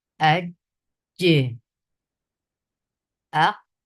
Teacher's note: یہاں قلقلہ ہو رہا ہے نبر نہیں